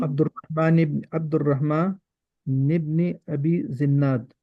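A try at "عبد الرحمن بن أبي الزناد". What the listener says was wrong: अच्छा, ये निब नी पढ़ा आपने, ये नीचे जेर पड़ी है, ये क्यों?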